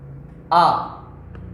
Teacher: मित्रों जहां से छोटा आ बोलेंगे उसी अंग से बड़ा आ बोलेंगे। यदि आप आ बोल के देखें तो जोर कहाँ पड़ता है, किस अंग में पड़ता है, कंठ में।